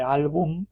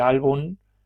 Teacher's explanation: Pero en final de enunciado, aunque se puede manifestar como alófono M, y esto es lo propio pues, de una pronunciación más o menos cuidada, en un estilo más relajado se puede manifestar como N. O sea que en vez de álbum, puedo decir álbum y no cambia el significado. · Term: neutralización entre M y N